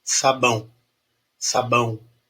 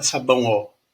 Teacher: o sabão termina com O, mas ele tem som de U. O U semivogal, representado pelo som, pelo W, né?